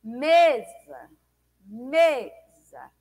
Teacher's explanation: Me foi falado com maior intensidade do que za, né? Então, me é uma sílaba tônica. · Então, me é uma sílaba tônica. Za é uma sílaba átona, porque ela é dita com menor intensidade.